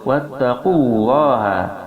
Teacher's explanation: qaf ini makharijul hurufnya berada di pangkal lisan sebelum kaf yang disentuhkan pada langit-langit mulut